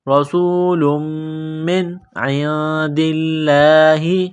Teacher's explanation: نون ساکن کے بعد عین ہے حروف حلقی ہے تو نون ساکن پر غنہ نہیں کریں گے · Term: حروف اخفا